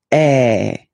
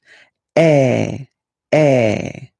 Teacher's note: So it's really open. I mean, the sound is really open, and normally your mouth should be opened a little bit more than with the accent aigu as well. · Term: accent grave